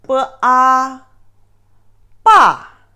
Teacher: And the fourth tone, ba, ba. This tone is a falling tone, which is at the beginning is very high, ba, and you feel it's a bit short, ba.